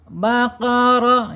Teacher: rnya harus dibaca tafhim tebal baqaro ya kenapa karena rnya mempunyai harakat fathah ya harus dibaca tebal faqar ah kemudian secara makhraj ro ini ada di alisan.